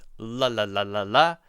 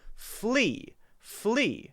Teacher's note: when I say the L sound, fl, I'm actually touching my tongue behind my teeth.